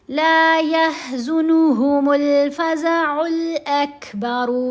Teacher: لام کے اوپر زبر، ساتھ الف، تو ہم نے لام کو لمبا کیا. الف ہے نا ساتھ، مدہ حرف ہے، 2 حرکت کے برابر.